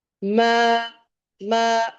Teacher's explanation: ما اس کو ماں نہیں پڑھنا اور میں نہیں پڑھنا. ان دونوں کے بیچ کی آواز نکلے گی